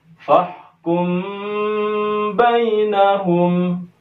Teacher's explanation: Mim sukun berjumpa dengan ba, ini adalah ikhfa syafawi, maka mimnya harus dibaca dengung sebanyak 2 harakat. · Maka di sini karena ini menjadi seperti hamzah wasal dan bacaan seperti ini hamzahnya tidak dibaca, fa ini langsung masuk ke ha sukun ya. Seakan-akan hamzah ini tidak ada, maka fa langsung bacaannya masuk ke ha, ditekan ke ha sukun.